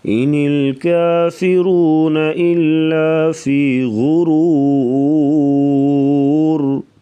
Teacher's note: کافرون را کو پر پڑھیں گے